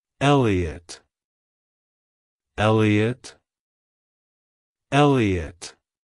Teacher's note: To pronounce it correctly, emphasize the first syllable, eh, and then le and uht. Make sure to pronounce the t at the end softly.